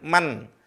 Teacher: Nun bertemu dengan Zay nun-nya samar suara n